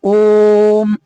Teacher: ओम के ओकार का उच्चारण सर्वत्र प्लुत ही होता है। आपको पता होगा, ओम, ओ को जोर दे करके बोलते हैं।